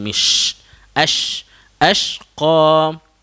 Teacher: makhraj huruf shin dia ada angin